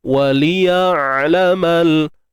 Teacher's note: Untuk huruf ain pula bersifat tawassut. Kan, suara yang tidak tertahan, tidak mengalir.